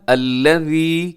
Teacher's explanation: سب سے پہلے الذی، یہاں ذال ہے اور ذال کو نرمی سے پڑھا جاتا ہے، اسے آپ نے زا نہیں پڑھنا، ذال، ذال بغیر سیٹی کے نرمی سے ادا ہوتا ہے۔ الذی جمع، تھوڑا لمبا ضرور کیجیے گا، الذی، کیونکہ آخر میں یا مدہ ہے